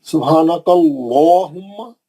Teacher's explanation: बाकी के लाम पतले, सिर्फ अल्लाह के नाम में का लाम मोटा। सुब्हानकल्लाहुम्मा, क्योंकि अल्लाह के नाम से पहले कैफ पे जबर है, सुब्हानकल्लाहुम्मा, काफ पे जबर रहने से अल्लाह का नाम मोटा पड़े।